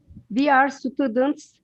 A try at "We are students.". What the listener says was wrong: Okay, very good.